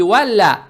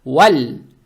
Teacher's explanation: Букву лам произносим мягко, и язык тут же не надо убирать, чтобы не было валаяталаттаф.